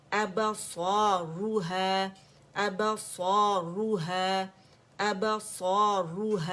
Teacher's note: ہا کو موٹا نہیں کریں گے، با کو موٹا نہیں کریں گے